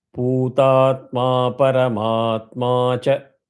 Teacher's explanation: bhutatma paramatma sounds very similar where hrasvam dirgam are coming alternatively. But anytime you see cha, don't chant it separately.